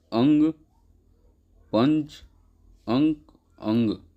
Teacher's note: अनुस्वार में नाक से ज़्यादा सांस निकलती है और मुख से कम